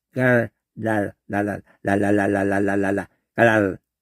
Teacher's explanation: 이 리을 발음 혀 끝으로 요 안에서 막 굴러. 깔랄랄랄랄랄랄랄랄랄랄랄 깔랄 받침이 되면서 깔랄.